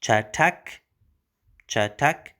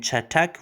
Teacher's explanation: chatak with a t sound, it's a retroflex t